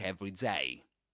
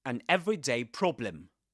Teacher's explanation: the stress, the word that's pronounced the strongest is the second one, the last one, day. Usually the stress goes on day.